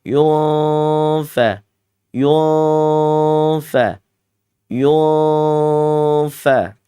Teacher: Manyun, bibirnya ke depan, yu. Ditambah nun sukun, setelahnya ada huruf fa, berarti dia ikhfa ausat. Ditarik lagi bibirnya ke belakang.